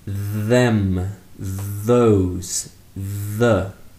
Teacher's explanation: We say voice because it is pronounced with a small vibrating sound. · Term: voiced th sound